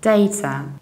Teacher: in the British accent, we usually say data, data with a soft British T, data. However, it can happen that you will hear also data, data with a long R.